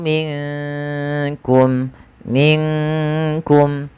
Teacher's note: huruf Kaf yang di mana Kaf makhrajnya dari pangkal lidah kita beririsan dengan langit-langit yang ada di atas